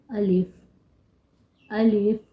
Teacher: الف جو کہ دہن یعنی منہ کے اندر کے خلا سے ادا کیا جاتا ہے